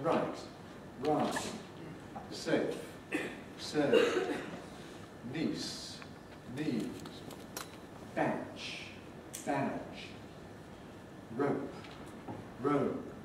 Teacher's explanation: the distinction between t and d is largely signaled by the duration of the vowel